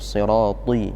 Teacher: Di sini agak susah karena siratin, ta itu huruf yang tebal. Ada sifat itbaq di situ.